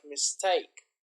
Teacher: usually early you can see here mistake so the intonation is the stress is on the second syllable